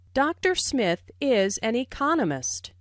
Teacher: Notice the stress on economist. This content word has new information, so it is emphasized.